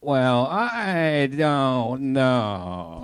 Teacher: when you do your comedy you kind of slow down and you do more of a vocal fry